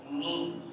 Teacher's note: یہ جگہ جو ہے نا یہ خالی رہے گی، با. اور میم، میم میں ہونٹ زیادہ ملتے ہیں تو وہ جو باہر کی طرف حصہ ہے خشک حصہ ان کے ملنے سے میم ادا ہوگی